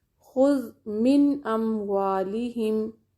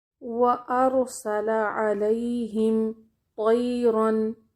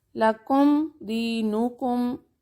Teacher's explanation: میم کی آواز ناک میں جائے گی لیکن ناک میں ٹھہرائی نہیں جائے گی۔ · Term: اظہار